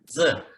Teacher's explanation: याचा उच्चार करताना आपण मराठी ज जसा करतो तसंच करायचा, म्हणजे जिभेचं टोक खालच्या इन्सायझर्सच्या पाठीमागे लावलं जातं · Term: मराठीतला ज